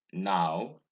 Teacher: the next diphthong is ow vowel 16 is the defunct ow it's an open back closing diphthong it occurs in o w in now in brow in out